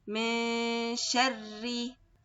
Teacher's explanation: We are going to hide the sound of the noon, but we want to say the ghunna. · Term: ikhfa